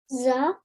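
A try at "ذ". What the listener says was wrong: So do you know with dal you pronounce it really softly. Try to touch your tongue with your upper teeth and then try to pronounce it. The a bit more softly.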